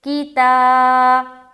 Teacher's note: تا الف خالی سے پہلے زبر ہے، الف مدہ ہوگا، الف مدہ کو ایک الف کی مقدار کے بقدر کھینچ کر پڑھیں گے، جیسے کتا۔ بی یا ساکن سے پہلے زیر ہے، یا مدہ ہوگی، یا مدہ کو ایک الف کی مقدار کے باقدر کھینچ کر پڑھیں گے، جیسے کتابی کتابی کتابی۔